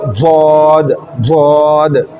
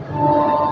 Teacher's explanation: मोटा पुर उसकी सिफात को पूरे मखरज के साथ अदा करके, जो हमने सीखा कि करवट दे के दाढ़ों की जड़ों के साथ ज़बान को करवट दे के तालू वाली जानिब जो है तरफ वो लगा के हवा देंगे तो अदा होगा ज़ाद, ज़ाद।